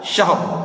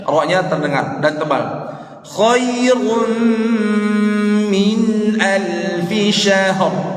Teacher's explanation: Ra-nya terdengar dan tebal.